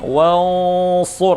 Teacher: Wansurna namanya ikhfa, menyamarkan suara nun pada huruf di depannya.